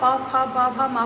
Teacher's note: सब में दोनों होठ आपके आपस में मिल रहे हैं।